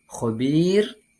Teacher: berdengung khobir dalam kalimat tersebut terdapat hukum bacaan Mad Arid lissukun cara membacanya Yakni dengan memanjangkan dua atau empat atau enam ketukan